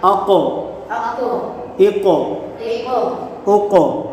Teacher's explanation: حرف مستعلیہ کو ہمیشہ پریانی موٹا پڑھتے ہیں، اور قاف حرف قلقلہ ہے تو اس میں قلقلہ خوب ظاہر ہوگا